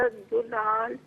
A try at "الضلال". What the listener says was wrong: دولال پہ ایسا محسوس ہو رہا ہے، فیل ہو رہا ہے کہ دعات کو آپ پیش کے ساتھ پڑھ رہی ہیں، تو اس کی ذرا پریکٹس کر لیجیے گا، دولال، ٹھیک ہے؟